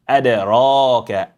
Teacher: round up your lip to get or apply heaviness to the sound of the ra, extended ra as well.